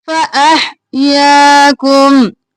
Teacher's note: फा और अह साफ आवाज में, या को खींचेंगे